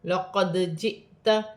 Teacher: دال ساکن ہے، حروف قلقلہ میں سے ہے، قلقلے کے ساتھ ادا کیا جائے گا ، لقد جئت، جزم حمزہ پر جزم کی حرکت ہے، جھٹکے · حمزہ پر جزم کی حرکت ہے، جھٹکے کے ساتھ پڑھا جائے گا